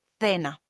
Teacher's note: in Spain, normally the C before E or I is pronounced like a TH sound